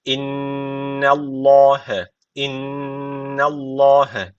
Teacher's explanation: Allah lafzı burada kalın okunuyor neden kalın okunuyor Çünkü öncesindeki harfin harekesi üstte yani üstten bağlanıyor bu öncesindeki harf Dolayısıyla Allah lafzı kalın okunacak · inne derken şeddeli nun var mutlaka bir elif miktarı diyoruz